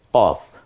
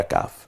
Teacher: কয় বফলা দিয়ে, এটা গম্ভীর আওয়াজে জিহ্বার একেবারে গোড়া থেকে কফ, পরেরটা কাফ।